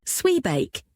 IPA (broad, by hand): ˈswiːˌbæk